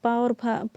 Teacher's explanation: और पा और फा जो है वो उपधमानीय है, इसका जो है उपपदमानीय नाम ओष्ठ, ओष्ठ से होता है। पा और फा जब बोलते हैं तो ओठ आपस में मिलते हैं ना, तो ये पा और फा जो उच्चारण स्थान है वो ओठ है।